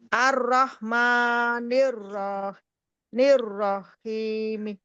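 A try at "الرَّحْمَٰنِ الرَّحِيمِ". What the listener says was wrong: Ya, Masya Allah.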